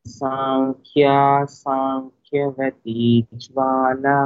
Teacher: in both words ఖా ఇస్ మహా ప్రాణ